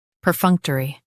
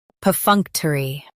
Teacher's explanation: US drops t. UK keeps t.